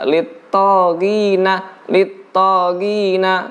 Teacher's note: Huruf to itu pun tebal. Jangan diucapkan seperti tak. Lit-taghina, lit-taghina.